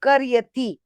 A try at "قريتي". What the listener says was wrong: قریتی قریتی نہیں، قریتی نہیں، بڑی قافی. قریتی. قریتی کر کر کر قریتی. ٹھیک ہے نا، تلفظ صحیح کرنا ہے ہمیں.